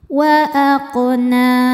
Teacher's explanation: Kemudian berada di tengah bacaan. Maka cara bacanya qof dipantulkan dengan pantulan yang kecil. Wa aqna. Na hukumnya mad thobi'i muqaddar. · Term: qalqalah sugro, qalqalah sughra